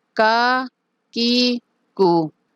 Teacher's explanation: کاف زبر کا، کاف زیر کی، کاف پیش کو، کا کی کو۔ زبان کی جڑ جب سخت تالو سے لگے تو کاف ادا ہوگا